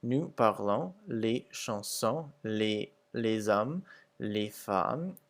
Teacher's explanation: the S's are pretty much not pronounced at the end of the words, except for les hommes, where it makes a Z sound. Whereas in the English equivalents, we speak the songs, the men, the women, all the letters are pronounced.